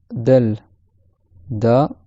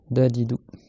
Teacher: Comme le D en français, avec le bout de la langue, qui touche derrière les dents du haut, la chair qui est derrière les dents du haut. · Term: lettre del